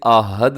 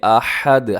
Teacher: اسے آحد نہیں پڑھنا بلکہ احد، ہا کا خیال رکھیے گا